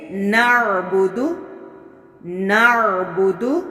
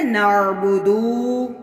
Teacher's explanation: دال کے اوپر پیش ہے تو اس کو ایک حرکت کے برابر ہی پڑھا جائے گا، جبکہ لوگ اس کو نعبدو یعنی واو مدہ کر دیتے ہیں، تو اس طرح پڑھنا بھی غلط ہے۔